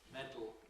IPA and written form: ˈmedl̩ (Medal)